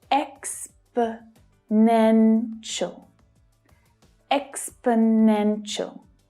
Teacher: The third is the strongest, though the first one is also stressed. The remaining 2 syllables are unstressed, so they reduce down, they become the schwa sound, which is always short and low in pitch · Can you hear how the 2 weaker syllables fade into the background?